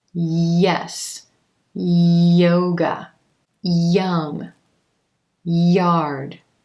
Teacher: the middle of the tongue is rising up towards the roof of the mouth and coming back down